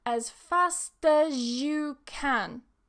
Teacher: Z and Y together. Remember, they come together and they make a J.